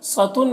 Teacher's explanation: اور الف مدہ ہے، ایک الف کے برابر کھینچیں گے، سطن صاد کو پر پڑھیں گے، یہ حروف مستعلیہ میں سے